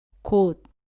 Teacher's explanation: 혀끝이 윗니 뒤쪽 잇몸에 닿은 채로 발음을 끝냅니다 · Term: 받침 소리 d